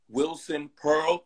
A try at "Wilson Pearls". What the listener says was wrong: Wilson Pearls with an S.